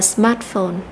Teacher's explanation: danh từ này có hai âm tiết thì chúng ta lại tập trung vào cái trọng âm của danh từ này đó là trọng âm rơi vào âm thứ nhất